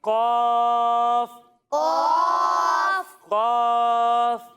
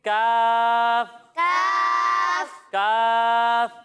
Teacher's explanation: تو اس قاف کو ہم موٹا کر کر پڑھیں گے، اور جب ہم کاف کی ادائیگی کریں گے تو اسے ہم باریک پڑھیں گے